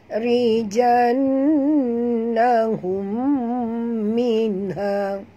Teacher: Dekat nun ada tasydid, wajib al-gunnah, wajib dengung